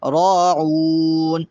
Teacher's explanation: را پہ بھی کھڑا زبر ہے، اس لیے اس کو بھی ایک الف کے برابر لمبا کریں گے